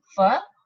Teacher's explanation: when you pronounce fir there is no vibration and it is voiceless